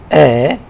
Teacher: your mouth remains unrounded, so it is unrounded vowel, and the tongue position is towards the front, so it is a front vowel. We say low mid, front, and unrounded. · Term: low mid vowel